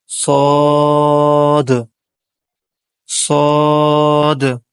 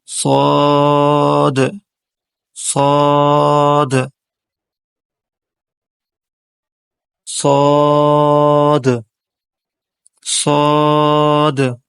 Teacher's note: زبان کی نوک اور ثنایا سفلا اور علیا کے اندر والے کنارے سے حرف صاد ادا ہوتا ہے